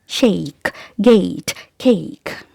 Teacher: just say it quickly to have this glide from the sound A to E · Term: diphthong sound